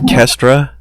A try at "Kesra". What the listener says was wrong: No, there's no T in it.